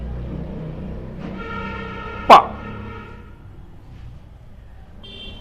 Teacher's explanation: प में सबसे पहले होठ मिलते हैं, यानी ये बाइलेबियल साउंड है। · तो वॉइसलेस है, अनएस्पिरेटेड है और बाइलेबियल है। तो हिंदी में बोलें तो ओष्ठज ध्वनि है, अल्प प्राण ध्वनि है और अघोष ध्वनि है।